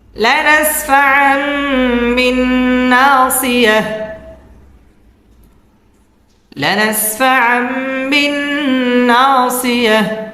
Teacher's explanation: লানাসফাআম এটা হচ্ছে ইকলাব, গুন্নাহ করে পড়তে হবে। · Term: মিম সাকিনে ইকলাব